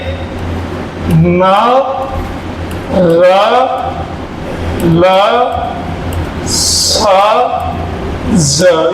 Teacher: ये जो मसोड़ों के यहाँ से इनका उच्चारण स्थान है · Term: वर्तस्य व्यंजन